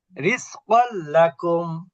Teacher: এরপরে রিজকাল লাকুম, এখানে শুধু মিলাতে হবে, গুন্না হবে না